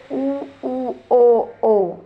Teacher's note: वृताकार है वृता मतलब जैसे बोला था मैंने मुह क्या है जैसे आपके होठ है वो वृत की तरह से गोल हो जाएंगे